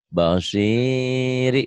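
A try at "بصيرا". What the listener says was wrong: Bagus, pinter.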